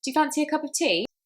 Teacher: that tea, which is obviously carrying a lot of meaning because that is what the person is offering, is much more high-pitched